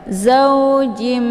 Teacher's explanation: Cara bacanya tanwinnya langsung dimasukkan ke dalam huruf mim ataupun dileburkan dengan cara ditekan kemudian ditahan lebih kurang 2 harokat sehingga terbentuk suara yang mendengung. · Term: idgham bi gunnah